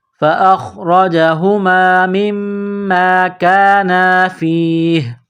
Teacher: جب یہاں وقف کریں گے تو ہا کو سائلنٹ کریں گے